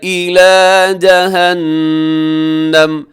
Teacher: یہاں جہنم میں نون کے اوپر تشدید ہے، غنہ کیجیے گا